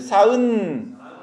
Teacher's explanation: 사은 하고 산하고 닫는 게 아니라 사하고 하면서 공기를 열어주는 겁니다. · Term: 비음